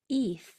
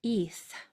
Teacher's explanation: for that last sound, my tongue is going between my teeth and I'm blowing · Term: TH consonant sound